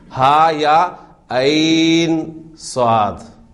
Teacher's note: اب عین میں یا ساکن سے پہلے زبر ہے، حرف لین بن گیا اور اس کے بعد ساکن آ رہا ہے، لہٰذا آپ اس کو لمبا کر کے پڑھ رہے ہیں